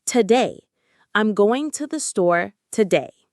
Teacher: The stress is on day, today. So the first syllable, to, is weak. We don't say to-day with a big round O sound. We reduce it. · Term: schwa